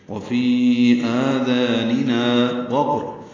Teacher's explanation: واو ہونٹوں کی نا تمام گلائی سے ادا کریں گے، قاف پر پڑھیں گے، اس پہ قلقلہ ہے، را بھی پر پڑھیں گے اور تنوین کے بعد واو آنے کی وجہ سے ادغام بھی کریں گے۔